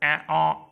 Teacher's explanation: અર્ધવિવૃત સ્વર એ ઓ મુખ અડધું ખુલે